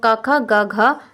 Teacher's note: क ख ग घ जो होता है हमारा कंठ होता है